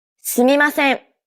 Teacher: Notice how each character is pronounced for an equal amount of time? すみません。 No character takes up more or less time than the other characters. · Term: mora-timed language